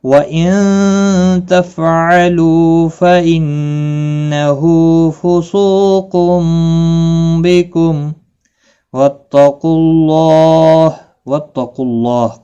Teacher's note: میم ساکن رہے گا وقف کی صورت میں، ملانے کی صورت میں اظہار شفوی ہوگا